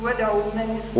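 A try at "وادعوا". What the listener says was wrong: ودعوا مد الطبيعي شكرا أهم الأخطاء عندك المد الطبيعي أهم شيء زود بالمد الطبيعي بارك الله فيك شكرا نعم فيا أيها الطالب به متمسكا مجلا له في كل حال عطفت معك نعم قول يا من أول السورة ألف لام را لام را هكذا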